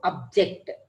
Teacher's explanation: It is a verb. So first one is not stressed. JECT is stressed.